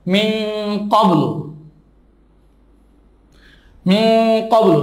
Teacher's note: নুন সাকিনের পরে কফ আসছে, এই নুনটা নাকের বাসিতে চলে যাচ্ছে, গোপন হয়ে যাচ্ছে, ইহাকে ইখফা বলে।